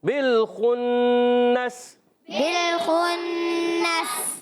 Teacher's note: خا ادا ہوتا ہے حلق کے اوپر والے حصے سے